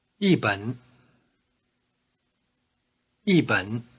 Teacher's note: notice that the tone of e changes to falling tone before the low tone of bun